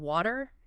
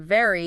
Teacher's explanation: to make the W sound like in water you round your lips yeah almost like you're about to say ooh whereas for v as in very you lightly touch your teeth to your lower lip